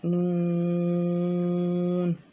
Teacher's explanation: یہ بھی حرف طرفیہ ہے اور زبان کا جو کنارہ ہے وہ اوپر والے جو چار دانت ہیں ان کی جڑوں کے ساتھ یہ ٹچ کرنے سے پڑھا جاتا ہے، ٹھیک ہے۔ pronounced from the tip of the tongue touching the gums of all top 4 teeth.